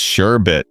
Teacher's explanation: It's actually just sherbet, no second R sound.